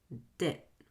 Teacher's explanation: I'm going to link the D at the end of the first word to the vowel at the beginning of the second word. The D will be a fast D, where the tongue very lightly with minimal pressure touches the top of your mouth.